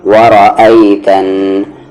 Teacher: نون پر تشدید ہے، غنہ کریں گے یعنی آواز کو ناک میں رکھیں گے